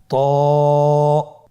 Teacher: জিহ্বার আগা সামনের উপরের দুই দাঁতের গোড়ার সঙ্গে লাগিয়ে উচ্চারিত হয়। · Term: মোটা হরফ